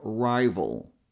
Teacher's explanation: a is so tiny that we pretty much skip it. So we go from the v sound, which you can make by touching the lower lip on your upper front teeth, and adding a little bit of voice, and we go straight to the dark L sound.